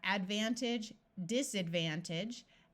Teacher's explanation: This right here is actually a suffix, and although the word by itself would be age, the suffix is pronounced more like idge